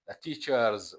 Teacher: ሳውንድ ስለሆነ ማለት ነው። teachers the teachers meeting was called off፣ the teacher ር ቮይስድ ሳውንድ ስለሆነ the teachers ሆኖ የሚነበበው ማለት ነው